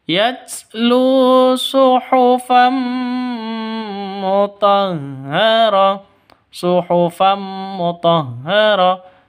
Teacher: Tanwin bertemu dengan mim, cara bacanya masuk ke mim disertai dengung. Karena idgham bila gunnah. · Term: idgham bi gunnah